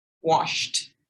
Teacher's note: The SH is unvoiced. So the sh sound, unvoiced, washed. There's a T sound.